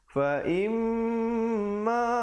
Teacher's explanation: Fa'im didengungkan di situ 2 harakat. Kadang-kadang di situ orang tak dengungkan.